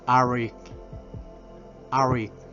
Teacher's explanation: Cuando encontramos una vocal, una consonante T, específicamente la T, y otra vocal, esa consonante T la pronunciamos como R, pero una R inglesa